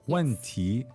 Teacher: Fourth and second tone. 问题问题 So falling and then rising.